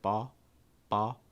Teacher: instead of pronouncing as an aw sound they actually just pronounced as an ah sounds like ba ba it's a ball or ball um there's